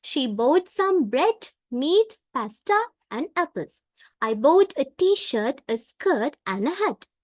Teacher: for bread, meat, pasta, we rise our voice and use the falling intonation on the last item to indicate that the list has ended. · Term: rising falling intonation